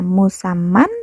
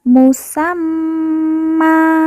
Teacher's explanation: tanwin an apabila waqaf berubah menjadi a berubah menjadi A dan dibaca panjang dua harakat